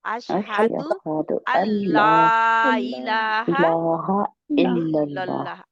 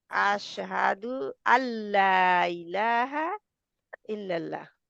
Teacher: नून लाम में मर्ज हो जाए